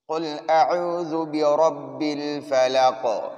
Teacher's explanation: دو نقطے والے قاف کو موٹا پڑھنا ہے